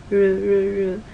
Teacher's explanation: R is more of a retroflex, so your tongue kind of curls up backwards.